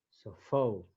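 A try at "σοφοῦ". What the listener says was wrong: El diptongo, no se olvide el diptongo. Fu.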